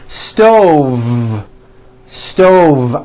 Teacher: i cook dinner on a hot stove with a voiced v